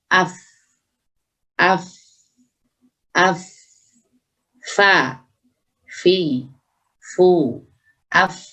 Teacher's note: makhraj fa, bibir bagian dalam itu menyentuh, menempel ke gigi seri atas